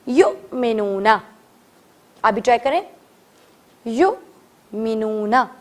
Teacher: جب بھی حمزہ کے اوپر ہمیں جزم کا سائن دکھے گا, we need to do give a jerk on it, ہمیں چھوٹا سا جھٹکا دینا ہے